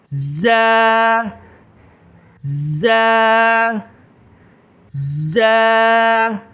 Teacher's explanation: ایک الف کے بقدر کھینچیں گے، تھوڑا زور دیں گے